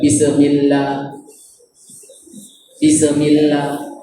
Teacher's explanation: kesalahan pada huruf sin yang bertanda mati sukun ialah tidak mematikan huruf sin dengan betul sehingga menjadi seperti bacaan qalqalah